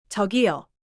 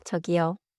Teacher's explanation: First, when you call out, the pitch goes up. 둘째, 끝소리를 살짝 길게 유지해요. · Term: rising call